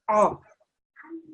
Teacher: this is an ayn, so the sound has to come from the middle of the throat.